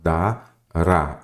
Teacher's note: ela é a sílaba tônica é a última